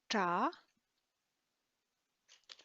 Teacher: So that's your ta, the retroflex T sound.